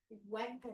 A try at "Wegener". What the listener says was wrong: It's vinegar. It's German. So you say it with a V. It's vinegar. Almost like vinegar, but not. Yeah, almost.